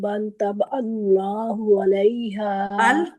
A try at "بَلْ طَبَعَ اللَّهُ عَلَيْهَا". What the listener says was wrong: طبع اللہ، عین جو ہے نا وہ اللہ حمزہ کی طرح لگ رہا ہے آپ کا۔